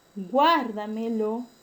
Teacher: El término guárdamelo lleva el acento en la tras antepenúltima sílaba. Por lo tanto, es un término que se considera sobreesdrújula.